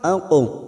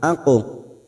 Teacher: huruf qaf sukun qalqala sugro yang mati asli di tengah kalimat jangan lupa dipantulkan